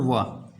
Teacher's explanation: दंतोष्ठ में हमारा केवल एक वर्ण आता है, वो है वा।